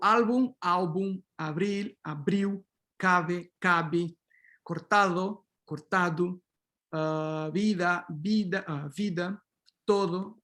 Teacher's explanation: In spoken EP, particularly in the central and southern varieties, you have these fricatives, almost like Spanish, but actually fricatives, not approximate